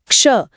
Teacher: क्ष असल में क और श का तेजी से बोला गया मेल है। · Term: संयुक्त व्यंजन